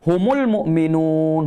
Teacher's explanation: Huruf ha pangkal halkum juga. Humul mu'minun tu. Pangkal halkum juga. Cuma bezanya adalah dia tidak tahan angin. Dia lepas angin. Dia tidak tahan suara, dia lepas suara.